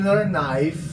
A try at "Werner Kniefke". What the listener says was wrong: Werner Kniefke. Werner Kniefke. I think the K actually is pronounced at the beginning of that. Because it's not English. The name's just German.